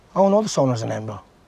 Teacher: l'accent écossais qui, entre autres, prononce et roule les R